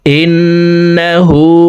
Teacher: হু এখানে এক আলিফ টেনে পড়তে হবে, ঠোঁট গোল করে এক আলিফ টেনে পড়তে হবে,